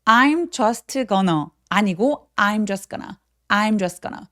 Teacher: 자음이 저렇게 세 개가 붙어 있는 경우에 중간에 오는 T나 D 소리들을 많이 삭제시키고 발음을 안 합니다